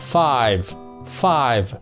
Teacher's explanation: mình đọc 5 rồi mới thêm âm phụ âm V cuối cùng nhớ nhé